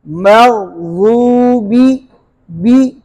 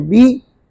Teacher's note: बा के नीचे जेर है तो बा के जेर को बारीक पढ़ेंगे